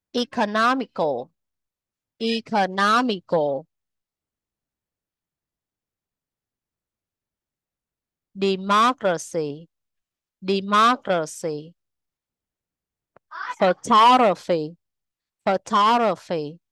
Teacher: trọng âm rơi vào âm tiết thứ ba từ dưới lên